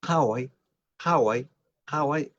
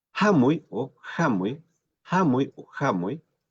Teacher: Hawái igualmente esa A es abierta, es más abierta que Hamuy